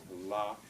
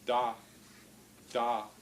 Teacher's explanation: the air comes out over both sides of the tongue